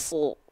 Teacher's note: Kan huruf tebal ceritanya. Kan huruf tebal yang lain huruf shad ketika fathah nggak dibaca sa tapi su